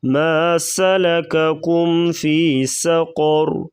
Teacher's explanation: قاف اور را کو پر پڑھیں گے